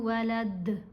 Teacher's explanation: جب وقف کریں گے تو دال کو ساکن پڑھیں گے، اس کے اوپر یہ 2 پیش ہیں، یہ نہیں پڑھی جائیں گی